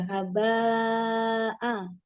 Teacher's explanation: Baknya 4 harokat tetap mad wajib. Karena dia hamzahnya diikutkan.